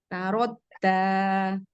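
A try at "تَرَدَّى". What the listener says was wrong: Jangan tarot dan seperti tak itu. Tarod tarod tarod Nggak boleh ada hamas, dia jahar. Nggak boleh ada anginnya. Ada cadel. Iza tarodda. Masih tarot seperti tak. ada suara berjalannya, Bun. Tarod rodda.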